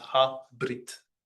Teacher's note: If pronounced, it does make just a short schwa, berit. But in this case, the schwa is silent, so it's just ha brit.